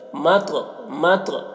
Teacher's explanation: ادائیگی صحیح سے کریں گے، حتی مطلع، مت میں یہاں پر تو کو پور پڑھ رہے ہیں اور تو میں قلقلہ کر رہے ہیں